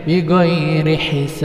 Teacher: Ab harus dipantulkan. Bi ghairi hisab. Wajib mantul. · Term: qalqalah kubro